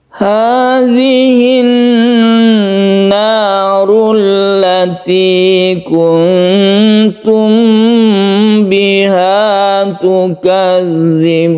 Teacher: Hadhihin naru idgham syamsiyah, karena al bertemu dengan nun maka membentuk tasydid nun, sehingga tasydid nun ini kita tahu setiap nun yang bertasydid ini dibaca gunnah, maka kita baca gunnah atau kita tahan ketika kita membaca tasydid nun.